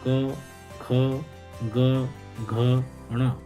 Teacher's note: इन सब का उच्चारण स्थान कंठ होता है और ये सभी वर्ण कंठ से उच्चारित होते हैं, इसलिए इनको कंठ वर्ण कहते हैं।